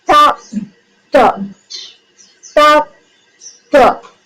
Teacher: Both are alveolar stop and the speech organs. Tip of the tongue touches the alveolar ridge